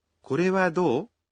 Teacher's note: It's a question, so please remember to say it with a rising intonation.